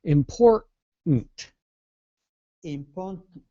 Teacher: you can explode the last T